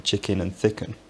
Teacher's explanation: many possibly even most non-british dialects merge the unstressed vowels in chicken and thicken